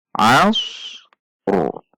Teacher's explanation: huruf ra tebal karena didahului oleh fathah